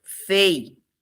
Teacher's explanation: E ele é formado de uma vogal mais uma semivogal. é um ditongo decrescente.